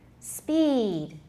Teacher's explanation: speed in isolation is pretty long